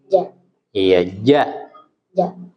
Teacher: huruf Jim bersih ya Enggak boleh keluar desis ya